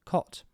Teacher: The dialect also exhibits the coat-cot merger, so COT and COAT are both pronounced COT